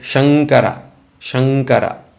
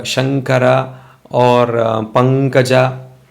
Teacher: it has to go from the from the throat through the nasal cavity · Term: anunnasika